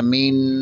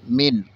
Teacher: نون ساکن کے بعد عین حروف حلقی میں سے ہے، یہاں غنہ نہیں اظہار ہوگا، یہاں غنہ نہیں کریں گے۔ بعض لوگ پڑھ جاتے ہیں مین، یہ غلط ہے، من، غنہ نہیں پڑھیں گے بلکہ جلدی جلدی پڑھ جائیں گے۔